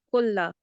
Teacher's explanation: There is no ishbaya stroke. So this will be 1 second only.